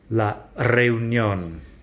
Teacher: At the beginning of a word, a single R is a hard double R sound.